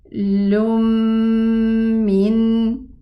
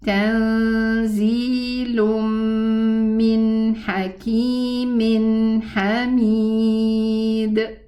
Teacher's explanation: the meme and the noon both have a built-in ghunna sound